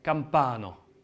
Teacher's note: le a en fin de mot on va pas dire a on va dire o c'est entre le E et le O